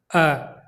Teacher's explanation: जब हम अ बोलते हैं तो जीभ का जो मध्य भाग है वो क्रियाशील होता है। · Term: मध्य स्वर